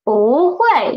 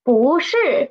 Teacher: when bu is before a fourth tone syllable, it will change into second tone. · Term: tone change